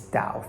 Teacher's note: It's Dao, third tone, as in to pray.